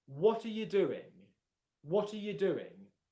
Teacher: you is much quieter than the other two words and you almost can't hear the word. It's just It's there, but it's very, very quiet.